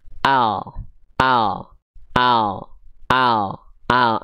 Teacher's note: cuman yang ditempelin itu cuman ujung lidahnya doang ini ke langit-langit depan